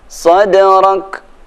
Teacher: Cara membaca kaf mati dan tak mati ada sedikit desisnya